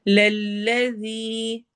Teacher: दाल को नरमी से पढ़ना है और या मद्दा करनी है